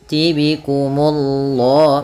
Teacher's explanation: Munya tipis baru Allahnya tebal.